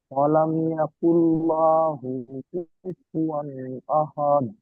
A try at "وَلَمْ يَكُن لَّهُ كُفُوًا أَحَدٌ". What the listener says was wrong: ওয়ালাম ইয়াকুল্লাহু বলছেন, লামের উপরে যাবার আছে, টান হবে না। হার উপরে উল্টা পেশ আছে, টান দিয়ে পড়তে হবে, এখানে টান ছেড়ে যাচ্ছে।